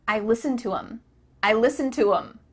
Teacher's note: The word them has the TH cut out